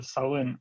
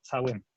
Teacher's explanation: Дело в том, что выходцы с юга так говорят в быту, но в школе их учат писать «ц» в слове, ну, например, в первом слове «шален», да, пишут они «цален», и северяне произносят это «сален», а в школе в Южной Осетии они произносят как «цален». Соответственно, когда человек, который на юге Осетии учился в школе, пишет «цален», он, скорее всего, так и произносит про себя во внутренней речи.